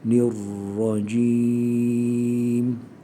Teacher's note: özellikle ranın tekrir sıfatı var biraz daha tekrir sıfatını belirtmek gerekir